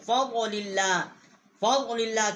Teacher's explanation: فضل اللہ کی لام جو ہے اس کو ہم نے اللہ کی جو لام ہے اس کے ساتھ مشدد کیا ہے